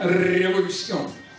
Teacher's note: в испанском языке переднеязычный звук «р». Причем он более раскатистый, чем в русском языке.